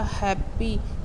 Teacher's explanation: जब ह बोलते हैं हैप्पी का हैप्पी, तो यहाँ पे आपकी जो साउंड है वो गले से निकल रही है। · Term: ग्लोटल साउंड